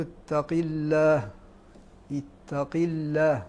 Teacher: وإذا قيل له اتق الله، اتق الله، القاف المكسور فيه التفخيم لأنه حرف استعلاء، ولكن أضعف المراتب أن يكون حرف الاستعلاء مكسورا، فهذه أضعف مراتب التفخيم.